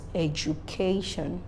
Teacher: that particular word has its emphasis on the third syllable counting from the beginning of the word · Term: penultimate syllable